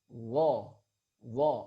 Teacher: Huruf dha dikeluarkan dengan cara menyentuhkan ujung lidah kita dengan dua gigi seri bagian atas.